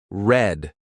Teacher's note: in English we don't roll it instead the tongue stays flat and slightly curled at the roof of your mouth just behind your teeth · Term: English R